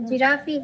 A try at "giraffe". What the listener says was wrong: It is not giraffe, it is giraffe. pronounce it giraffe, not giraffe. That E is silent.